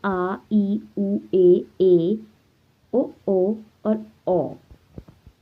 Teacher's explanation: दीर्घ स्वर, जिनके उच्चारण में ह्रस्व स्वर से अधिक समय यानी 2 मात्रा का समय लगता है